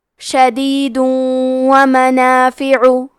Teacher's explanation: کلمت شدید کے آخری میں دال پہ تنوین پیش ہے، پھر حرف الواو آتا ہے کلمت ومنافع، واو حروف الادغام بغنہ میں سے ہے، ادغام کا معنی ہے حرف کو حرف میں داخل کرنا، تو ہم تنوین کو واو میں ملا کے غنہ اور تشدید کے ساتھ یہ حکم کو ادا کریں گے